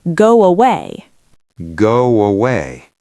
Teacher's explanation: Away starts with an ah. My lips are round for go. To open them for away, a W sound naturally happens. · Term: glides